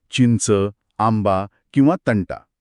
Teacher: पहिला अनुस्वार ज्याचा उच्चार नाकातून अत्यंत स्पष्ट आणि खणखणीत होतो.